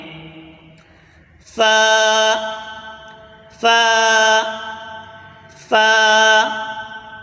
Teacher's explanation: ऊपर के दांतों के किनारे और नीचे के होठ की तरी वाले हिस्से से अदा होता है · فا اوپر کے دانتوں کے کنارے اور نیچے کے ہونٹ کی تری والے حصے سے ادا ہوتا ہے۔